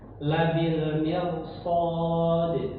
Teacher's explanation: Kemudian pelajaran yang selanjutnya kita ambil adalah ee huruf ee ro walaupun didahului kasrah tapi kalau karena bertemu huruf shad yang berharakat fathah maka dibaca tebal